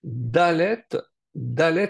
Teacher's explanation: c'est dur, c'est une lettre dure puisque elle est dentale, donc Dalet.